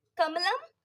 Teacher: क वर्ग के जो वर्ण होते हैं व सारे कंठ से बोले जाते हैं